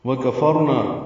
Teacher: وکفرنا واو ہونٹوں کی نا تمام گلائی سے، کاف باریک ہے، را فا کی زبر کی وجہ سے پر ہے